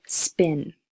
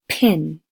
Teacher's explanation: you should feel that bursts of air because of that aspirated